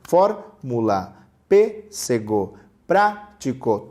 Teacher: todas com a antepenúltima sílaba sendo forte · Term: proparoxítona